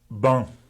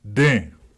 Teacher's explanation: In the official Bambara orthography, nasalization is represented by an N immediately following the vowel. The N is not pronounced but simply nasalizes the preceding vowel. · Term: nasalized vowels